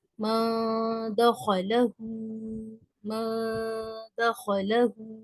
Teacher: جی، پہلے اخفا پھر غنہ۔ نون ساکن کی آواز کو چھپانا یعنی زبان کی نوک کو اوپر کے تالو سے نہیں لگانا۔ غنہ کرنا یعنی ناک میں آواز کو روکنا۔